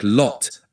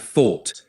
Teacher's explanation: Lot has a shorter, more rounded vowel, while thought has a longer, more open vowel. In General American English, these two vowels are often merged into the same sound, so lot and thought can sound quite similar.